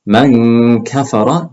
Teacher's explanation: the nasal sound does not sound deep like when you're doing the qaf